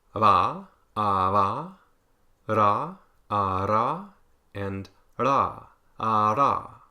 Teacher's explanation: It's just one quick contact between 2 articulators. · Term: taps or flaps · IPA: ⱱ ɾ ɽ